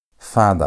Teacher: That ah sound, that long ah sound is how you pronounce the vowel kamets.